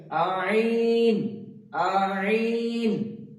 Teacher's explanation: কন্ঠনার মধ্যস্থল থেকে উচ্চারণ হবে আইন